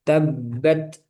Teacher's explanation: ta sukun disidda dulu, dikuatkan dulu baru dilepas